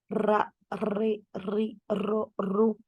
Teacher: La punta de la lengua sube al paladar y vibra.